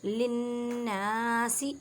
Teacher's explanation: نون مشدد گنہ کریں اور ایک الف کی مقدار میں کھینچ کر پڑھیں